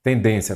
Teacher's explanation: qual que é a sílaba tônica? Den, não é isso?